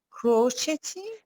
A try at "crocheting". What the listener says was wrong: No, the T is not pronounced, yes. Crocheting.